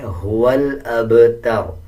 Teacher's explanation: با کے اوپر جب جزم آ جائے تب با کو قلقلے کے ساتھ پڑھا جاتا ہے. جب وقف کریں گے تو را کا پیش سائلنٹ ہو جائے گا اور را کو پر یعنی موٹا پڑھا جائے گا